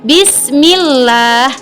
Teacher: dimana Lam tarqiq ini lam yang dibaca tipis